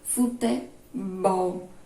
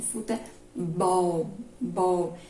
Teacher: Exemplo de oxítona, futebol. A sílaba tônica é a última, mais forte. Futebol, bol, é a mais forte.